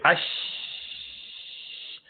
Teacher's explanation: If you say ash, sound and breath both continue.